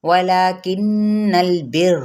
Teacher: غنہ کرتے ہوئے لام کے ساتھ ملائیں گے، را کو پر پڑھیں گے